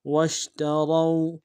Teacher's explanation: واو کو شین کے ساتھ ملانا ہے، شین حرف تفشی میں واضح کریں گے، را کو موٹا ادا کرتے واو کے ساتھ ملانا ہے، واو لین بغیر کھینچے پڑھیں گے۔